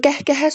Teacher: Qəhqəhə sözündə sonuncu hecaya düşür. Yəni üçüncü hecayə.